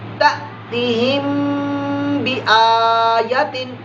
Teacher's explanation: शफ़वी ऐसा गुन्ना जो हम होंठों से करते हैं। तो यहाँ पर जो है मीम साकिन के बाद बा आ गया, लिहाजा यहाँ भी गुन्ना होगा, इख्फा शफ़वी का होगा।